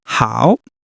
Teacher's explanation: It's a third tone just like W. So your voice dips and rises.